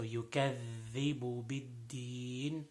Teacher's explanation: this is the dhal, tip of the tongue and tip of the two upper front teeth.